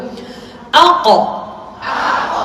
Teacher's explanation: أقصى اللسان مع الحنك اللحم, dengan lelangit lembut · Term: huruf qaf